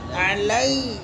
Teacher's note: کا ای یا کا علی عین زبر لام یا زبر لی لین کے جیسا نہیں نرمی نہیں تشدید ہے سختی ہونا